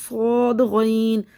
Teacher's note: صود کو منہ بھر کے پڑھنا ہے موٹا کر کے